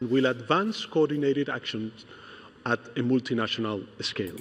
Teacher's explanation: He puts a a lot of identity on that unstressed syllabic L.